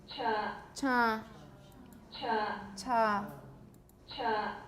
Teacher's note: I it sounds a bit nasal to me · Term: nasalization